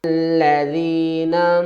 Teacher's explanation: اب ہم کیا کریں گے، الف کے اوپر زبر اپنے پاس سے لگا لیں گے، الذین، اور لام کے اوپر تشدید ہے تو سختی بھی کریں گے